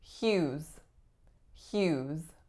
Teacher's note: in yes the vowel is ooh and the final s makes a Z sound · So the first letter that we see is the letter H, but what we don't necessarily see is that the following sound is the Y sound, as in yes. The vowel is oo, and the final S makes a Z sound.